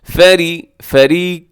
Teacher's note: را باریک ہوگا کیونکہ را کے نیچے زیر، ایسے فارے نہیں پڑھنا اپنے، فیری۔